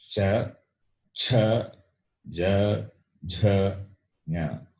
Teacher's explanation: Then the second class we saw, which are talavya, meaning palatals. They are pronounced by the tongue touching the palate, the middle portion of the mouth.